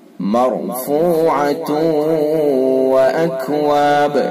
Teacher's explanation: فیہا سرر مرفوعہ، مرفوعہ را پر ہوگی، اور تاکہ پر دو پیش کی تنوینیں اگر وقف نہیں کریں گے، وصل کریں گے تو تنوین کو یہ اگلے واو کے اندر جو واو ہے آیت کے بعد اس کے اندر ملا دیں گے، اور پھر اس کے اندر ادغام ناقص ہوگا